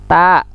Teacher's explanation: Ta ujung lidah dengan pangkal gigi.